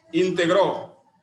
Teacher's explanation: Integró es una palabra aguda. Su mayor fuerza o intensidad recae en la última sílaba.